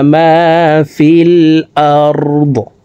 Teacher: দদকে ওয়াকফের ক্ষেত্রে সাকিন করে ফেলবো